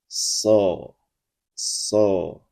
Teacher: Namun jika so, maka dibunyikan dengan mengangkat pangkal lidah ke langit-langit.